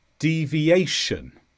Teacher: This is a noun and the stress is on a